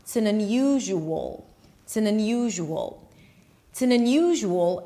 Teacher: when you move into the dark L at the end of the word unusual, it seems like you have an O sound. And it also seems like you have a W sound.